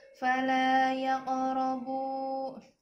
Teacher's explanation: Bila huruf qalqalah yang 5, qaf, ta, ba, jim, dal dalam keadaan sukun asli, sukun di tengah kalimat atau ayat, maka dipantulkan dengan ringan, tidak ditekan, dinamakan qalqalah sughra